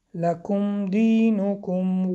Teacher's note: ولا اینجا هم مد منفصل انتم اخفا عابدون ع مد طبیعی بدون مد طبیعی ما اینجا هم مد منفصل اعبد قلقله و آیت آخر لکم دینکم ولی دین. لکم دینکم اظهار شفوی میم روشن خوانده می شود